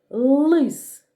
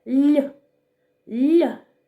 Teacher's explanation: у слові лис звук л вимовляємо твердо лис А у слові ліс звук ль ми вимовляємо м'яко ль ль л позначаємо однією рисочкою тому що він твердий приголосний